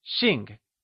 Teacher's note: To be surnamed is translated as Xìng Xìng is spoken in the falling tone also known as the fourth tone Also remember,that x is always spoken with a sh sound in Mandarin